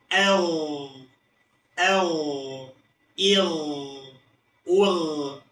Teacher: Lalu huruf gain juga memiliki sifat rakhwah. Ketika huruf gain sukun, maka dia memiliki sifat rakhwa, yaitu mengalirnya suara.